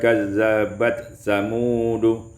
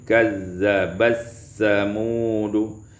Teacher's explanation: idgham ta fi sa, diidghamkan tak pada sa maka menjadi kazzabas samudu.